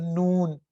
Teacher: اسی طرح نون، اب یہ دیکھیں نون میں آپ نے ایک اور چیز دیکھیں کہ یہاں سے یہ تیر آ رہے ہیں اور یہ ناک سے نکل رہے ہیں، تو جب آپ نے یہاں زبان لگانی ہے تو سانس آپ نے ناک کے ذریعے سے نکالنی ہے، تو یہ تھوڑا سا غنہ سا بنے گا · نون، اس کی آواز آپ نے ناک سے نکالنی ہے